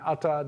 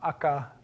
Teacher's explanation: In Hawaiian, T has become K, with the consequence that Hawaiian has no T.